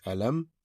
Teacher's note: the first word is alam, where meme's sound will not be prolongated, so it will be alam.